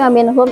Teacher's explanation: ini adalah izhar halqi karena ada nun mati bertemu dengan huruf H. May yu'minu, nun mati bertemu dengan huruf ya.